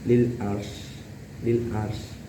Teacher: Dan ayat kedua di situ li walaya lil ars itu dinamakan idhar halqi karena ada tanwin menghadapi huruf ain dan membacanya harus jelas, tidak boleh didengungkan